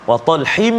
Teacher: Masukkan bunyi dengung atau bunyi tanwin, masukkan bunyi tanwin hin tu ke dalam mim dengan sempurnalah, maksudnya masukkan penuh. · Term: Idgham ma'al ghunnah